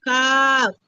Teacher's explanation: 5 নম্বর মাকড়া সড়কের মধ্যখান হইতে না জিহ্বার গোড়া জিহ্বার গোড়া হইতে একটু আগে বাড়াইয়া তার বরাবর উপরে তালুর সঙ্গে লাগাইয়া মধ্যখান পেঁচানো কাপ। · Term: 5 নম্বর মাখরাজ